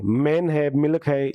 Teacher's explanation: एम बिलावियल नाक से